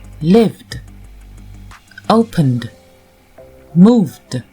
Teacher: Comme vous pouvez le constater, le E du ED n'a pas été prononcé. Il est muet, on l'entend pas. On n'entend que le D. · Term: le ED qui se prononce D